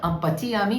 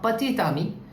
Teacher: If I write a word, for example, pati ami, so this is not pati ami, this is pati tami. So T will be pronounced before the word ami, the ending T, pati tami, which means a boyfriend actually, pati tami.